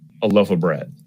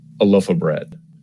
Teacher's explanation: We might just use the reduced vowel, our old friend schwa, instead of clearly saying the word of.